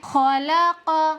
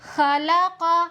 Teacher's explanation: خ حروف مستعلیہ میں سے ہے، اس کو ہمیشہ موٹا کر کے پڑھیں گے، جیسے خلق۔ خ کو اگر ہم اس طرح سے پڑھتے ہیں خلق تو اس طرح پڑھنا درست نہیں، خ باریک ہو جائے گا۔